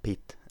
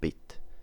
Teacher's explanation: Both P and B are bilabial plosives, but the former is voiceless and the latter is voiced.